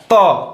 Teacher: जब आप बोलेंगे आपका जीभ आके दांत में सट रहा है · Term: दंत वर्ण